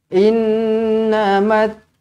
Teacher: terus rapatkan bibir dua harakat didengungkan